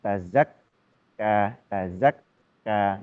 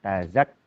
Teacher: Huruf kaf itu punya sifat mendesis dan juga sifat syiddah atau kuat tertahan. Jadi ketika tasdid tazakka, tazakka, jadi tertahan.